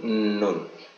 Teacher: Nun ini adalah nun yang dibaca jelas, bukan nun yang didengungkan.